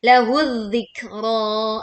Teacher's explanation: Alif lam ke za. Maka za-nya yang kita langsung baca. Alif lam seolah tidak ada. Lahu dzikra. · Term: lebur